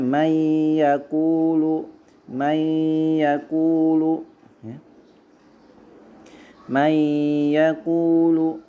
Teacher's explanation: Idgham bi gunnah, ya, nun sukun bertemu dengan huruf ya